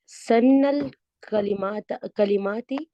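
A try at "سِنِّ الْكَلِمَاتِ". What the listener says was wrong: जेर के साथ ही मिलाए ना, जबर ना लगाए। तशदीद के नीचे हो तो वो जेर होती है ना, और ऊपर हो तो वो जबर होती है। सन्निल कलिमातिल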